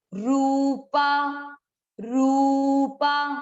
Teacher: रू मात्रा बड़ी है तो आपको इसको दीर्घ करना है, मतलब इसको उच्चारण में अधिक समय देना है।